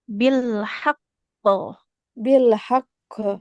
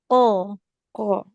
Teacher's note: huruf qofnya qo qo jangan mengalirkan nafas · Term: qalqalah